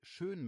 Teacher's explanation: schön mit Ö, also die Lippen rund machen